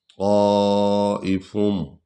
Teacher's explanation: طا کو پر پڑھیں گے اور اس کو لمبا کریں گے. اس میں مد ہے، مد کا معنی ہے لمبا کرنا، بڑھانا.